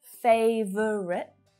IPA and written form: 'feiv (ə) rit (FAVOURITE)